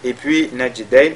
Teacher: Najdayn, la lettre jim qui est lue avec al-qalqala